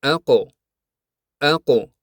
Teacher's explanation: havoni chiqarib yuborsak, yaʼni qalqala bilan aytsak, tovush aqov aqo kabi aniq va ravshan eshitiladi. Shuning uchun arab tilida bu harflar qalqala bilan aytiladi.